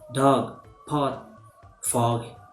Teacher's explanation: Another is articulated in the vocal tract with the lips in a half open and round position. It's a short vowel.